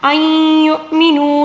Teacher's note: نون ساکن کے بعد یا ہے اور یا کے اوپر تشدید ہے، یہاں پر ہم نے ادغام مع الغنہ کرنا ہوگا